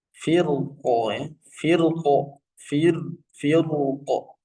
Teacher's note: Namun apabila diwakafkan dengan sukun rnya hanya dibaca tebal